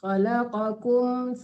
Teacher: Kum itu jangan tertahan, tidak dengung.